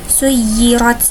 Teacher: roknya yaitu rok tafhim karena berharokat fathah maka harus dibaca tebal.